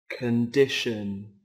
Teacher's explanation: có 3 âm tiết trọng âm rơi vào âm tiết thứ hai